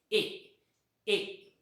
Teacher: Because while प्रोनाउन्सिंग this sound my lips shape is not rounded. या साऊंडचा उच्चार करत असताना माझे ओठ गोलाकार होत नाहीत, त्यामुळं याला अनराऊंडेड व्हावल म्हणतात.